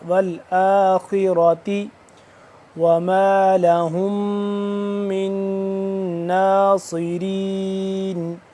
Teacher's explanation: را موٹا، والآخرة وما لهم من ناصرین، ہا میم پیش ہم، میم مشدد، آگے نون مشدد، دونوں پہ غنہ ہو رہا ہے ، اور اس کے بعد سوا ہے، سواد ہے کو کریں